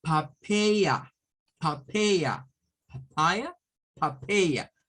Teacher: Pero suena con schwa al principio y schwa al final.